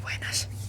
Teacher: Even when I say buenos, I have that sh sound.